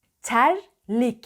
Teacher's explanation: dilin ucu arkadan başlıyor öne doğru le ye doğru geliyor